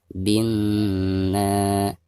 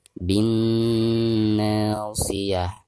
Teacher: Ketika membaca na-nya dipanjangkan 2 harokat karena dihukumi mad tabi'i